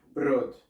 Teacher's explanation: Hay algunos en la región que pega más con Polonia y Rusia que pronuncian la R bastante fuerte, como por ejemplo Brot.